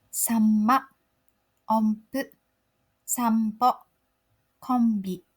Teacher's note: When the next sound starts with P, B, or M, you need to close your mouth and prepare for the next sound.